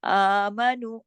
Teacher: آ کے اوپر کھڑی زبر ہے، 1 الف کے برابر کھینچیے. آمنو، میم کو بیچ میں نہیں، الف کو اور نو، یہ 2 جو حرف ہیں 2 حرکت کھینچیں گے کیونکہ اس کے اوپر کھڑی زبر ہے، اس کے ساتھ واو مدہ ہے.